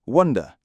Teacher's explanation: Lots of speakers in the north of England will use the uh vowel sound like in put · Lots of speakers in the north of England will use the U vowel sound, like in put, wonder. Wonder, spelt with an A, is pronounced with the short O vowel, like in October, and hot, wonder, wonder, wonder.